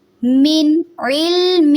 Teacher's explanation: من کو نون ساکن کو واضح کریں گے. علم عین کو حلق سے ادا کریں گے.